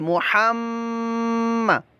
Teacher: जब मीम मुशद्दद हो तो उसके अंदर हम गुन्ना करते हैं। सबक नंबर 13 में ये बताया गया है कि मीम मुशद्दद और नून मुशद्दद में गुन्ना करके पढ़ेंगे।